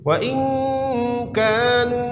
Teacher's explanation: nun mati berjumpa dengan kaf, ikhfa. Ini kita baca samar-samar.